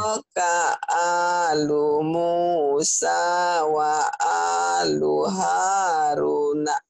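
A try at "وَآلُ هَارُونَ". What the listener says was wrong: Ru-nya panjang. Ru-nya panjang, H-nya panjang. H ini panjang karena mad asli. Ru-nya panjang karena mad tabi'i. Na-nya pendek karena kosar. bacanya gini ya. Taraka alu Musa wa alu Harun. Jadi mad disukun.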